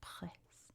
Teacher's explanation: Sounds like you're choking a little bit on the R sound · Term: weird French R